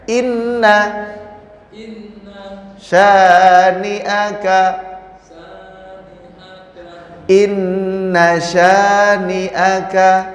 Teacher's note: Nahnya jangan panjang. Yang panjang syanya. Maka dibacanya harus cepat.